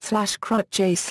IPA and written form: kruəɟ (crua)